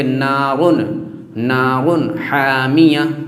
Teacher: تو حامیہ، تو دو تنوین کے بعد ہا آ گیا، اور ہا حروف حلقی ہے، حمزہ ہا، عین ہا، غین خا، حروف حلقی 6 ہیں، حمزہ ہا، عین ہا، غین خا، تو ہا حروف حلقی آ گیا، اس لیے اب رن کے نون کو ظاہر کر کے پڑھیں گے